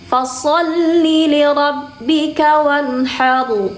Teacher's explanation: Bukan sekadar fasal aja. Tapi pangkal lidahnya harus diangkat. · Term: huruf sha